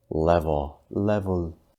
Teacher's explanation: sounding the most natural level level dark L this is where the front of your tongue is down against the bottom of your mouth and the back of your tongue is slightly raised the real key though is that you need lots of breath